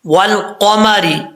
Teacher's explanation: لام جو ہے وہ ساکن ہے، قلقلے سے بچنا ہے، اور آگے قاف جو ہے حروف مستعلیہ میں سے ہے، پر کر کے پڑھنا ہے، اور آگے نیچے زیر را بریک پڑھا جائے گا۔